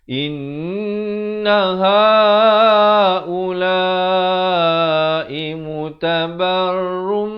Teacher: Asalnya ra tanwin di depan bunyi run, tapi bila datang mim terus masuk rum, tapi didengungkan dua harakat. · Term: idgham bi gunnah